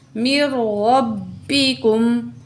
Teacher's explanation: میم کی زیر کو را تشدید سے ملا کے پڑھیں گے. را زبر با، رب، با زیر بی، کاف پیش میم کم، میر ربکم.